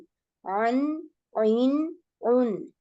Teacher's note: আইন হা উচ্চারণ করার সময় কণ্ঠনালীর মধ্যভাগ ব্যবহৃত হয়